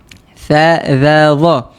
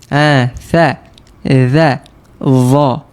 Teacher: Tiga huruf ni berada pada hujung lidah dan kita kena keluarkan sedikit hujung lidah kita.